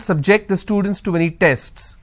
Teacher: my stress has moved to the second syllable